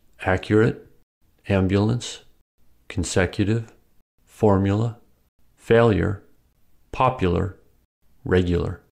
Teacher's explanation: When U is unstressed it may sound like yah